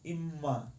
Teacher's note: You don't say imma, but imma. The mem becomes stronger, a longer mem. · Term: dagesh